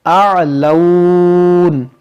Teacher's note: یہاں پر دیکھیں ہماری سانس ٹوٹ گئی تو اس جو زبر ہے اس کو ہم ساکن کر دیں گے اعلون, اور رکیں گے تو پھر مد لین عارض کا قاعدہ لگے گا. یہاں پہ مد لین عارض کا قاعدہ لگے گا کیونکہ یہاں واو ساکن سے پہلے زبر ہے, یہ واو لین ہے, اور واو لین کے بعد یہاں پر نون پر رکنے کی وجہ سے عارضی سکون آ رہا ہے, تو یہاں پر ہم کریں گے مد لین عارض اور ملا کر پڑھیں گے تو پھر مد لین عارض نہیں ہوگا.